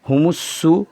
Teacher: پیش کی آواز کو ادا کرتے وقت ہونٹ دونوں گول ہوتے ہیں اور آواز اوپر کو جاتی ہے